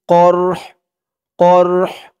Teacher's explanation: ধরবে আসবাহুমুল করহ এখানে থামার কারণে কফ দিয়ে র কেও ধরবে হা কেও ধরবে হার আওয়াজটা লাস্টে একটু ভাসবে